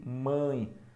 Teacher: apesar de eu ter a letra E, o som é de I, semivocálico.